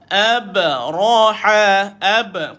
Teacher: Qalqalah lantunkan bunyi ba